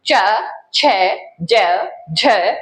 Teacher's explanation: च छ ज झ बोलेंगे तब हल्का सा घर्षण महसूस होगा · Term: स्पर्श संघर्षी व्यंजन